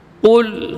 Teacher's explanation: huruf qaf itu huruf yang keluar dari pangkal, bukan ujung tenggorokan